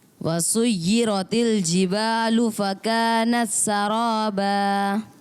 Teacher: تا سین میں سے لگتا ہے جیسے مدغم ہو گیا، مل گیا